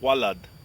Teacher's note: in modern Arabic, there is no VV sound. There's only a W sound. The the letter that represents the VV in Hebrew or the wow in Hebrew is actually a W sound.